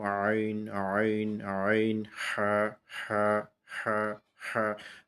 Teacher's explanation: বের করার জন্য অর্থাৎ গলাটা আমাদের এখানে শক্ত হয়ে যাবে এবং গলার মাঝের অংশটা থেকে আমাদেরকে এই আইন এবং হা উচ্চারণ করে বের করে আনতে হবে · একটু চেপে ধরে প্রথম প্র্যাকটিস করব আইন আইন আইন হা অর্থাৎ গলাকে শক্ত করে এই দুইটা হরফ উচ্চারণ করে বের করতে হবে স্বাভাবিকভাবে উচ্চারণের বের করার যে নিয়মটা সেটা স্বাভাবিক এখানে ভারী মোটা